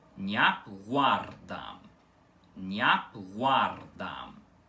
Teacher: O i do né é pronunciado muito rápido, como se fosse uma semivogal, fazendo uma palatalização do N com o N e assim criando o fonema nhã. · a primeira sílaba dessa palavra balborana é nhap e não niap, com esse i mais demorado